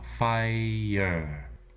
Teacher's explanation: Starts with an F sound, and then we have the I diphthong. And finally, the R-colored schwa,